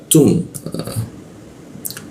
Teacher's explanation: ada hembusan udara yang bocor ya untuk membaca huruf ta